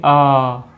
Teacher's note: ह्रस्व स्वर से तो 3 गुना टाइम ज़्यादा ले रहा है प्लुत स्वर बोलने में